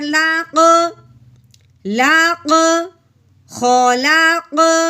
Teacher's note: لام کو قوف کے ساتھ ملاتے ہوئے اس کو ہلانا بھی ہے، کیوں کہ قوف بھی حروف قلقلہ میں سے ہے